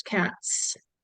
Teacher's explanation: So in cat, the sound is t, which is an unvoiced sound. So the unvoiced sound for S just automatically occurs